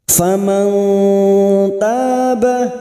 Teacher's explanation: Faman, nun sukun bertemu ta, ikfa hakiki. Kita samarkan bunyi nun sukun dan mendengung selama 2 atau 3 harokat. Ini juga yang disebut dengan ikfa aqrab.